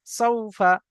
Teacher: সাউফা, সিন ওয়াও জাবার সাউ, ফা জাবার ফা, সাউফা। ওয়াও সাকিনের ডান দিকে জবর এসছে, এটি হলো ওয়াউলিন। ওয়াউলিনকে নরম আওয়াজে তাড়াতাড়ি পড়তে হয়, টান দেওয়া নিষেধ। ঠিক ওই রকম ভাবে ফায়ের উপরে জবর এসছে, জবরটি হলো হারাকাত, হারাকাতকে তাড়াতাড়ি পড়তে হয়, টান দেওয়া নিষেধ।